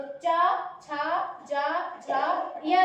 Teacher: अपने जिह्वा को जब तालु से स्पर्श किया जाता है तो च, छ, ज, झ, या जैसे वर्ण निकलते हैं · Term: तालव्य व्यंजन